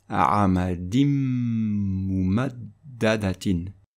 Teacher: Avec la règle de l'assimilation, le nun sakin va disparaître et le mim va prendre un shadda. Et donc ça va être prononcé mimmalin. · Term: l'assimilation idgham avec hunna, règle de substitution